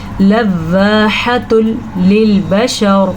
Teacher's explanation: जब कभी नून साकिन और तनवीन के बाद लाम या रॉ आ जाए तो किसी किस्म का कोई गुन्ना नहीं होगा, बग़ैर गुन्ने के हम इसे अदा करेंगे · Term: इदगाम बिला गुन्ना